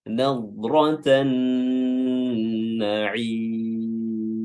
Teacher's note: Nadratan na'im, ya, na'im, ya, huruf nunnya di sini yang tasydid dia dipanjangkan durasi tasydidnya karena nun mengandung gunnah, ya, dan gunnahnya harus diperjelas dengan baik.